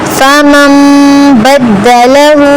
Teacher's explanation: فمن بدله نون پر غنہ آیا. فمن میم اوپر آ گیا تو نون کو میم سے بدلیں گے. فمن بدله الٹا پیش آیا, تھوڑا سا کھینچ کر پڑھیں گے.